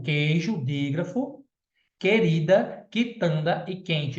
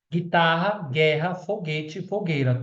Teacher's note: Todos são dígrafo, porque eu não consigo escutar o som do U